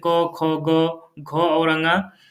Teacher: जो क वर्ग होता है उसमें जितने भी अक्षर आते हैं जैसे क, ख, ग, घ और ङ तो यह जो है कंठ से उत्पन्न होने वाले वर्ण कहलाते हैं